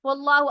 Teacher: اللہ کے لام سے پہلے زبر آ گئی، اللہ کا لام موٹا پڑا جائے گا